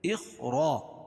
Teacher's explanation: اخرا، الف سے پہلے زبر ہو تو الف مدہ، اور را کے اوپر زبر ہے تو را کو پر پڑھیں گے